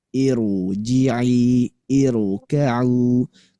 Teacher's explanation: hamzah wasal bertemu ro sukun, maka ini harus dibaca tebel.